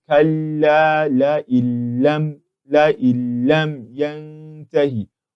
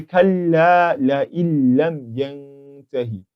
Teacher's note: we are going to be entering the Nuun into the lam without any form of gunnah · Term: idgham without gunnah